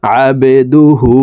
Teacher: হার উপরে উল্টা পেশ আছে তাই ঠোঁট গোল করে এই হাকে এক আলিফ টেনে পড়বো